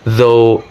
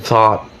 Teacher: the voiced and voiceless TH in though and thought